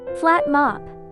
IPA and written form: flæt mɑ:p (Flat Mop)